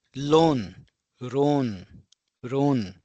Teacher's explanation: there is no la sound in Japanese. It's always replaced with the ra sound.